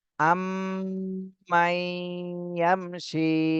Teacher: শীতে এক আলিফ টান দিতে হবে, জেরের বামে জজমালা ইয়া মদের হরফ · নুন সাকিনের পরে ঈদগামে বা গুন্নার হরফ এসেছে, এই জন্য গুন্না সহ মিলাতে হবে